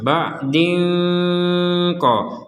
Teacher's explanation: Ada tanwin di sini, ada harok kasrotain bertemu dengan qaf, kita baca dengan samar. Ba'din ko. Samar itu artinya antara jelas dan dengung.